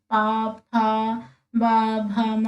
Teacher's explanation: हमारे लिप से टच हो रहे हैं ना एक दूसरे से, तो इसलिए इसका हम ओष्ठ्य व्यंजन कहेंगे